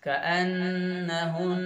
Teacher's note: فَبِأَيِّ آلَاءِ رَبِّكُمَا تُكَذِّبَانِ كَأَنَّهُنَّ, यहाँ पर नून पर तजदीद आ गई तो यहाँ पर गुन्ना करेंगे, आवाज़ को नाक में रोक के रखेंगे